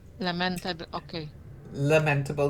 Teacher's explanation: I have found the pronunciation with the stress on the first syllable